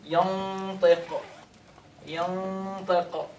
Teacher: The tip of the tongue is forward in your mouth. It's not where the exit of the qaf, right? So it's a little difficult to say, to do tafkhim for the ta.